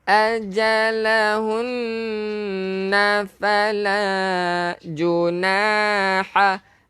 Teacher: Nun yang bersabdu kena dengung. Wajibal gunnah.